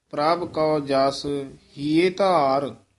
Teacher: ਇਸੇ ਤਰ੍ਹਾਂ ਹੀ ਕੌ ਸ਼ਬਦ ਬੋਲਣਾ ਕਈ ਵਾਰ ਪਾਠੀ ਸਿੰਘ ਕੋ ਬੋਲ ਜਾਂਦੇ ਹਨ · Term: ਕਨੌੜਾ